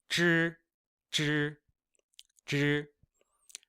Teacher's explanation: In any case, I generally say that ZH, CH, and SH are the same as these first three, but you are kind of curling your tongue upwards. So ZH is like a J sound, but imagine curling your tongue up. So instead of being like G, it's zh, zh, zh.